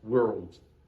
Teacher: Cuidado, a palavra mundo, eu tenho que fazer um posicionamento da língua, que isso poderá render uma outra aula, certo? A minha língua tem que fazer o som retroflexo, world. Tá ok.